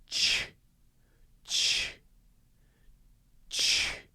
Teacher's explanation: Ch, ch, ch. I'm starting by blowing air through my teeth, and then my teeth come slightly apart. My mouth comes slightly apart.